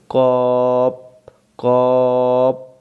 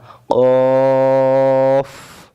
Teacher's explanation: কফ বলার সময় শেষে বাতাস বের হতে হবে। আমরা অনেকে এটাকে ভুল করি, কপ কপ না, কফ।